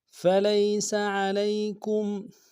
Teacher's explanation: فَلَيْسَ عَلَيْكُمْ، فلیس میں لام کو یا کے سامنے لانا ہے، یا لین بغیر کھینچے پڑھیں گے، سین کی سیٹی باریک ہوگی۔ فلیس علیکم، عین کو گہرائی سے ادا کریں گے، لام کو یا کے سامنے لانا ہے، یا لین بغیر کھینچے پڑھیں گے، کاف کو میم ساکن کے سامنے لانا ہے، میم ساکن میں غنہ کریں گے۔